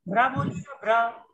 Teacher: हाँ रा में पूरा जोर पड़ रहा है, इसलिए रा पूरा है